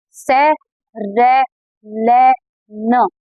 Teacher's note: हमारी दोनों साइड से दाढ़ों के ऊपर से जीभ टच हो रही है, मतलब वो वत्स है